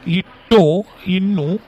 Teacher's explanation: இட்டும் இன்னும் நுனி நா நுனி அன்னத்தை பொருந்த பிறக்கும்.